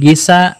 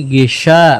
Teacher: Ini huruf shin, hati-hati jangan sampai ketukar sama huruf sa. Bukan gisa, tapi gisya, tengah lidahnya tebal ya